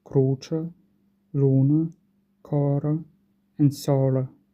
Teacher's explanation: Starting with Eastern dialects, as I've mentioned, they are also called Sardinian-like, and that's because they've merged the pairs of short and long vowels. So the words cruce, luna, cor, and solo in these varieties are pronounced as cruce, luna, coro, and solo.